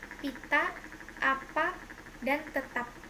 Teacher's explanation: Konsonan P, kriterianya bunyi bilabial, hambat tak bersuara, contoh katanya pita, apa, dan tetap.